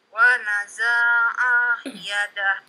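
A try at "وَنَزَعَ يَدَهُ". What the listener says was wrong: Za-nya pendek.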